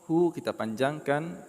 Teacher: Hu kita panjangkan 2 harakat mad silah qasirah.